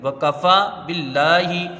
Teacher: لفظ اللہ سے پہلے زیر ہے، اس کا لام باریک ہوگا، لام میں کھڑا زبر ہے، 1 الف کی مقدار رہے گی، ہا کے نیچے زیر ہے، اس کو جلدی پڑھیں گے.